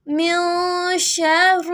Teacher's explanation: نون کے اوپر جزم ہے، نون کو ناک میں پڑھیں گے